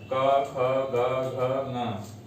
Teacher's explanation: कु अर्थात क वर्ग, क, ख, ग, घ, न, तो क वर्ग जो है वह कंठ से उच्चारित किया जाएगा